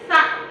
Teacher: Cara penyebutan huruf sa di ujung lidah. Sa. Sa, jangan sa.